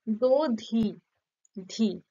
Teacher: শেষে যে ব্যঞ্জন ধ্বনিটা থাকছে সেটার উপর শ্বাসাঘাত কম হচ্ছে ফলে কি সেই ধটা তার অবস্থানটা কি ক্ষীণ হচ্ছে উচ্চারণটা ক্ষীণ হচ্ছে দুর্বল হচ্ছে ফলে সেই ধটাকে লুপ্ত করে দেওয়া